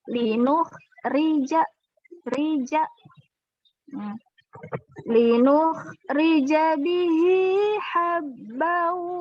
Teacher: kalau ri itu karena ro-nya kasroh, jadi dia tipis.